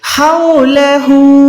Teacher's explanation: ہا حلق کے درمیان سے